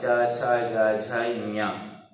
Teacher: तालु और जीभ की स्पर्श से बोले जाते हैं, इसे इन्हें तालब वर्ण कहा जाता है।